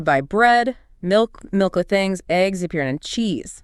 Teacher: That final item gets a falling pitch to signal the list is complete. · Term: final fall